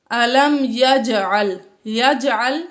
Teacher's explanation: جیم میں قلقلہ ظاہر کر کے ہم نے اس کو ہلا کر پڑھا